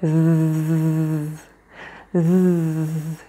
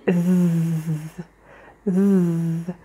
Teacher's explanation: la langue entre les dents qui touche légèrement les dents du dessus et là, tu utilises tes cordes vocales et donc du coup, ça fait zzz, zzz. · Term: le voiced